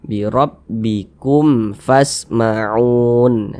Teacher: izhar syafawi hukumnya baca jelas tak berdengung dia maka baca pendek saja